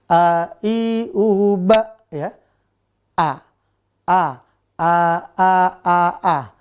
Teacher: A itu nggak boleh ada sengaunya. Dan tempat keluarnya harus di tenggorokan bawah. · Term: hamzah